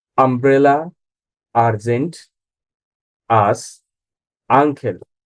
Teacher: দেখুন এগুলোর প্রথমে ইউটা স্বরে আ এর মত প্রোনাউন্সিয়েশন হয়েছে